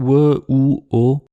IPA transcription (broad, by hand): w, u, o